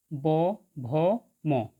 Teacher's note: এই বর্ণগুলি উচ্চারণের সময় স্বরতন্ত্রী দুটিতে কম্পন অনুভূত হয়, তাই এই বর্ণগুলিকে ঘোষ বর্ণ বা নাদ বর্ণ বলে।